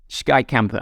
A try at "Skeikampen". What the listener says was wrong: It wasn't too bad, but it's Skei to begin with instead of ski. Skeikampen.